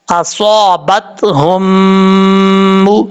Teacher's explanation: ایک الف کی مقدار غنہ بھی کریں گے جب میم کے اوپر شد ہے